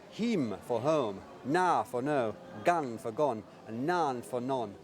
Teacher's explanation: literature's first funny northerner, who speaks with flat vowels